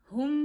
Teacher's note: हा को गले के आखिर से अदा करिए